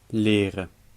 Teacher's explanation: In leren, the R is at the beginning of a syllable, so it's a French R.